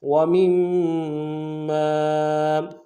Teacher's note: تشدید زور دیں گے، اگلے میم کے ساتھ الف مدہ ہے، الف مدہ کے اوپر مدہ عارض ہے، دو الف کی مقدار میں کھینچیں گے